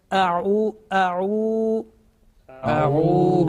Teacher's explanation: ayn with dhamma, then ayn sound will be prolonged. Because vav madda is a letter of prolongation.